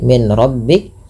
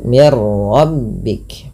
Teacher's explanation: Dan di sini juga idgam kamil. Nunnya hilang secara utuh karena langsung ke huruf ro. Dan ro dibaca dengan tebal. Hati-hati dalam melafalkan rak dibaca dengan mirbik. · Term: idgham bila ghunah